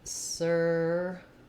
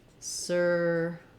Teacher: And the only real difference between these two is that in service, the V sound, is voiced, versus surface, the f sound, is voiceless. What I mean by that is if I say the sound that V makes, I can feel vibration here.